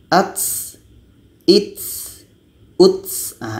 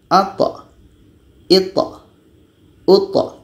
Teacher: Ketika tha ini berbaris sukun atau mati, sifatnya qalqalah, bukan hamas, bukan berangin. Jadi kalau sifat hamasnya seperti ini, ats, its, uts.